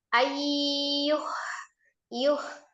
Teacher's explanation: ada nun sukun bertemu dengan huruf ya, idgham bi ghunnah, diidghamkan ke huruf ya, ditasdid dengan ghunnah atau dengung ya